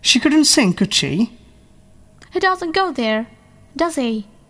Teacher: Tag questions. In tags, we use falling tunes.